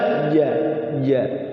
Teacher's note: Tidak boleh ada, dia itu jahar, tidak boleh ada anginnya. Ya, tengah-tengah lidah.